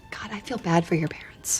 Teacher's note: The stressed words are feel, bad, and parents. Listen to how they stand out more than the other unstressed words like I and for and your, which were reduced and pronounced more quickly.